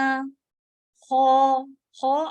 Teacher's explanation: اچھا ہیوی کرنا ہے، ہونٹ گول نہیں ہونے دیجیے گا زیادہ، بالکل بھی کوشش کریں ہونٹ گول نہ ہو.